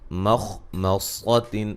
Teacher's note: خا کو موٹا ادا کریں گے